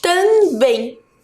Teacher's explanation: Qual é a sílaba mais forte de também? É o bem.